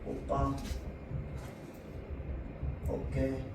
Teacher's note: 두 모음 사이에서 나는 된소리